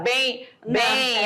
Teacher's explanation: letras i e o faladas ou escritas serão o quê semivogal quando eu falo bem esse m tem um som de i